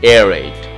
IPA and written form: ˈɛːreɪt (Aerate)